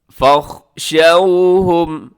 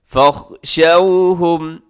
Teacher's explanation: یہاں واؤلین ہے، واؤ ساکن سے پہلے شین کے اوپر زبر ہے، نرمی سے پڑھیے گا اسے